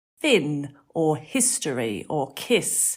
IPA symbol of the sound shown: ɪ